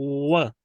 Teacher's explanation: और दूसरा है डब्ल्यू की आवाज बाई लैब दोनों को मिलाकर गोल करना व व राइट। दोनों होंठों को आपने सेट करना है और इन्हें गोल करना व। पहले ही नहीं गोल कर लेना, जब व कहेंगे तो ओपन साउंड है ना असल में डब्ल्यू भी, ये सेमी वॉल है, तो इसलिए हम इसे राउंड करेंगे तो दोनों होंठ यूज होंगे।